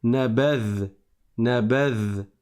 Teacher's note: Je m'arrête sur la consonne du zel et je ne prononce pas de voyelle après parce qu'il n'y a pas de voyelle, c'est un soukoun.